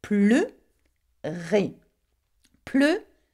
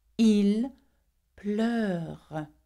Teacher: So the difference is that in the infinitive, you pronounce the E, E, but when you conjugate it, you pronounce it er. Why? Because it has an open sound at the end, okay?